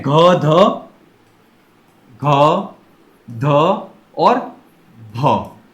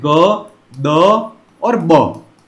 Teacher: यह घोष महाप्राण ध्वनियां है जो कि परिवर्तित होती हैं घोष अल्पप्राण में।